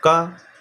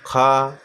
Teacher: का कम हवा निकली मुंह से, खा ज़्यादा हवा निकली, गा कम निकली, घा ज़्यादा निकली।